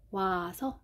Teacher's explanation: 그래서 모음 축약 현상이라는 것은 일단 단모음과 단모음이 만나서 이중모음이 되는 거예요